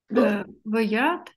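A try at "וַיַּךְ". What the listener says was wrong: Нет, ваях. Это каф.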